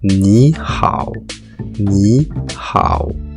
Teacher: La sonorité est assez proche du R en français. Ensuite, ne séparez pas le A et le O. La transition doit être fluide, comme une glissade. Le son O doit arriver délicatement à la fin. · Dans les deux cas présents, nous avons affaire au 3e ton. Ce ton est indiqué par ce petit chapeau inversé qui veut dire que la tonalité descend puis remonte.